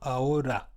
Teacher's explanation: It's not rolled, it's single, ahora.